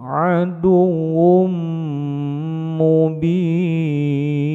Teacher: Aduwwum, baunya ditekan pendek, harokat tasdid, kemudian mim, idgham, tanwin masuk pada mim, idgham biguna, ditekan panjang, dua ketukan